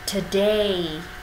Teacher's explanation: Nguyên âm âm tiết thứ hai sẽ nhận trọng âm, thế nên mình nhấn vào âm day.